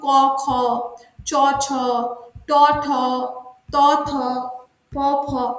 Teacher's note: যে স্পর্শ ধ্বনিগুলি উচ্চারণের সময় কণ্ঠস্বরে মৃদু ভাব থাকে, সেগুলিকে অঘোষ ধ্বনি বলে। যেমন বর্গের প্রথম এবং দ্বিতীয়, এগুলিকে অঘোষ ধ্বনি বলে।